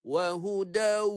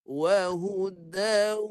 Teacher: Wahudau, itu bunyi waw penuh, itu dipanggil idgham kamil. Kalau naqis, masuk waw separuh di hidung.